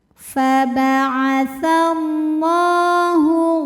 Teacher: huruf lam berbaris fathah panjang maka kita panjangkan lamnya dua harakat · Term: Mad thi'i muqaddar, matobi'i muqaddar